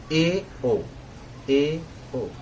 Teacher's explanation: अर्ध संवृत में है ए, ओ, मुंह इसमें आधा बंद रहेगा